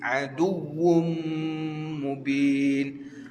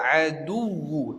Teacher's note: Adu tu sebab kerana huruf waw tu dia ada sabdu. Kena tekan sikit.